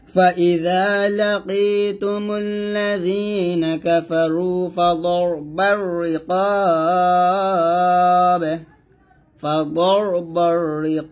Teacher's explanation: আমরা এখানে 3 আলিফ টান দিয়ে বাটাকে ধরবো এবং কলকলা করবো